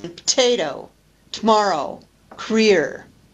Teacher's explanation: the loss of an unstressed vowel following initial p t or k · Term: deletion